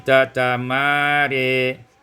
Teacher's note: Pada ayat yang ke-55 tatamara, imalatu fathatir ra wal alif, dibaca imalah fathah ra dan alif, maka menjadi tatamare